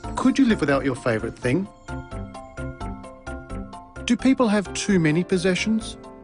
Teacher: Rising intonation patterns are used for these questions. Did you notice the pitch of his voice rise at the end of the questions?